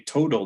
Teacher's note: When we say total, that's got a voiced sound in the middle, even though it's a T. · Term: T becoming flap